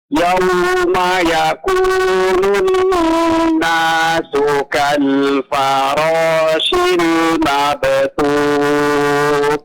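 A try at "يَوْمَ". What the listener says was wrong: Nah, huruf ya di sini tipiskan ya Pak ya. Yauma, bukan yauma, bukan yaum, tapi ya.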